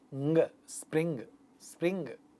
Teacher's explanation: This is a velar nasal sound